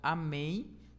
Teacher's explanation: a última sílaba é a que recebe a sua tonicidade você pode ver até a partir do assento aqui então Amém